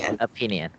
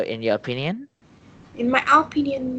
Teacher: okay you'll get in the first syllable which is not okay it is stress on the second syllable